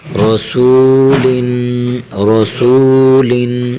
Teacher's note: را زبر را، سین وا پیش سو، رسو، لام دو زیر لن، رسولن، رسولن، لام کے نیچے تنوین ہے، لام دو زیر لن، حرف را کو موٹا کرنا ہے۔